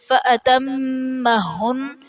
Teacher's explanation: فَأَتَمَّهُنَّ میم مشدد ہے غنہ کریں گے، نون مشدد ہے یہاں بھی غنہ کریں گے